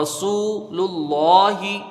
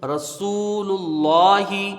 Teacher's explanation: لفظ اللہ کے لام سے پہلے پیش ہے، یہ لام پر ہوگا ، لام میں کھڑا زبر ہے، ایک الف کی مقدار رہے